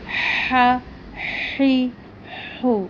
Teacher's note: یہ حلق سے ادا ہوتا ہے، آ ای او نہیں کہنا۔ حا پڑھی زبر حا، حا پڑھی زیر حی، حا سیدھا پیش حو، حا حی حو۔